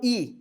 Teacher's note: Quando a gente faz um i anterior, língua para frente.